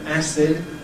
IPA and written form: ˈæsɪd (acid)